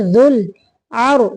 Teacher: रा को साकिन करते हुए मोटा करेंगे। ज़ुल अर्शिल मजीद।